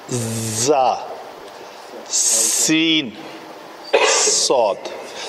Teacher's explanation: इनका मखरज है सनाया उलिया और सुफला, दोनों जब आपस में मिलते हैं तो पीछे से आगे ज़बान टच करती है उनको, तो ये तीनों का आपस में मिलाप जो है एक सीटी की आवाज़ जो है वो क्रिएट करता है, इसलिए इनको सफ़ीर सीटी को कहते हैं, इन हरूफ को कहते हैं सीटी वाले हरूफ। · सीन और सौद में फ़र्क सिर्फ पतला और मोटा होना है, मखरज इनका सेम है।